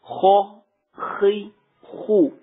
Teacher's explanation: خا حروف مستعلیہ میں سے ہے اور حروف مستعلیہ ہمیشہ پر یعنی موٹے پڑے جاتے ہیں، اور جب ان کو پر یا موٹا پڑیں گے تو اکثر اوقات کیا ہوتا ہے کہ لوگ ہونٹوں کو گول کر لیتے ہیں، ہونٹوں کو گول کر لیتے ہیں.